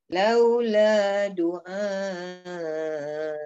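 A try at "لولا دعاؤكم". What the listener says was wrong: Nah, turun juga. Dia banyak. Nah, banyak tu. Jangan turun lagi, jangan turun lagi. Ul ma ya'ba'u bikum rabbi laula du'a'ukum. bikum rabbi laula du'a'ukum.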